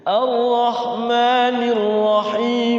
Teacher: Mad ahli sukunnya jadi dua harakat